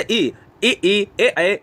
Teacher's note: जीभ का आगे का हिस्सा सक्रिय है तो वो अग्रसर होंगे।